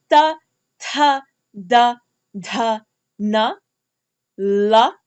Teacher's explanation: The dentals are quite easy because your tongue is touching your dentals, your teeth